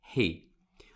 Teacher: hay que hacer una H aspirada